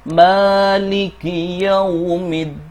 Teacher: Dan setelah mad di sini, tidak ada hamzah, sukun, waqf, atau tashdid. Jadi, cara membaca Maliki di sini adalah dengan dua harakat atau dua ketukan. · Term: mad thobi'i